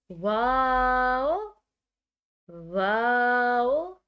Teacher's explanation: اپنے ہونٹوں کو گول کر کے پھر ایک دم سے کھول کے پھر گول کر کے واو کو ادا کیا جائے گا۔ واو، واو۔ واو کو ادا کرتے ہوئے کوئی بھی جھٹکا نہیں دیا جائے گا، بالکل سمپل طریقے سے، بالکل سادہ طریقے سے اس کو ادا کیا جائے گا۔